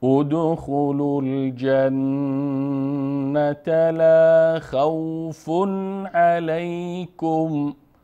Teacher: بعد از تنوین حرف عین است و حرف عین از جمله حروف اظهار هست، پس مستقیما تنوین نون تلفظ میکنیم